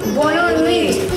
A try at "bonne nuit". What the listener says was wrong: Non, pas le te.